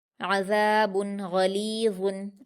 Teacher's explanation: बा की तनवीन को जाहिर करके बगैर गुन्ना के जल्दी पढ़ेंगे। अज़ाबुन गलीज़ुन, गईन पर हरकतें जल्दी पढ़ेंगे और पुर पढ़ेंगे। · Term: इजहार